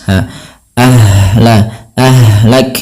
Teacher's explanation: ha di sini juga ada yang kita namakan dengan sifat rokhawah, mengalirnya nafas